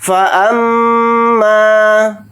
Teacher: فا کو جلدی پڑھیں گے، حمزہ کو میم کے ساتھ ملا کر پڑھیں گے، اور میم کے ساتھ الف مدہ ہے، میم الف زبر ما کو تھوڑا کھینچ کر پڑھیں گے. میم کے اوپر تشدید ہے تو میم کے اندر غنہ بھی کریں گے، یعنی ناک میں تھوڑی دیر آواز کو روک کر اس طرح سے غنہ کریں گے.